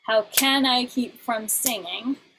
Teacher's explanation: singing is still emphasized on the first syllable because that's lexical stress. We need to stress at the first syllable.